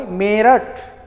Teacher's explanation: मेरठ में म में जो क्या है, ए है, इस पर आप बल दे रहे हो, मेरठ। तो इसी पर ये जो बल दे रहे हैं यही क्या है, बलाघात या स्वराघात है।